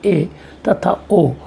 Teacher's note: अर्ध समृद्ध स्वर ये वे स्वर हैं जिनके उच्चारण में मुख आधा या अधिक बंद रहता है